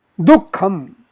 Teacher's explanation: the visarjaniya stays, but the next k causes a slight smell of an additional k sound to be coming in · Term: jivhamuliya